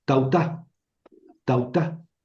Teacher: Es decir, junté las palabras, pero quité una A, ¿lo ven? Quité una alfa, tautá. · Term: crasis